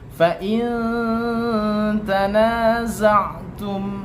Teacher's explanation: Maka membacanya harus dengan samar-samar. Suara yang samar, tidak terlalu jelas, tidak berdengung. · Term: hukum ikhfa